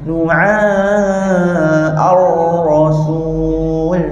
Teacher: Ain nipis, ra tadi tebal